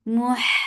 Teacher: Muh for dhamma circle ellipse attached with ha. Ha will get sifa of rakhawa and it should be from your throat and it has hums.